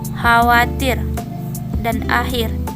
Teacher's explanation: Termasuk konsonan geseran disepolar. Konsonan ini jika artikulator aktifnya pada pangkal lidah dan artikulator pasifnya langit-langit lunak.